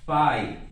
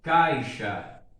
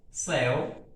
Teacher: é decrescente quando a vogal vem antes da semivogal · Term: ditongo decrescente